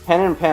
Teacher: they're only pronounced the same when they're before nasal consonants like n and M